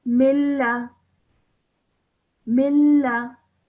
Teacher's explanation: So when I say this part of this word, I produce no nasal sound. So straight away I join the meme onto the lam without producing a nasal sound in between. So in fact, I would basically ignore this sound of the noon. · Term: idgham kamil